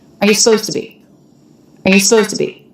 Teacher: it's a yes no question so he's making his intonation go up